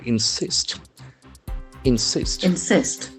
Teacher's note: the accent actually falls on the second syllable